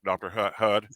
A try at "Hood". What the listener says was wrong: It's pronounced in the Eastern fashion, not the Western vowel sound.